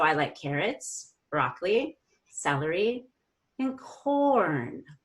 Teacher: you're going to go down up down up down up until you get to the very last item then you're gonna go up down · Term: items in a list